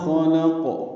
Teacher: خلق میں خا اور قاف پر ہیں، بیچ میں لام باریک ہے۔ قاف ساکن پہ قلقلہ ہوگا وقف کی صورت میں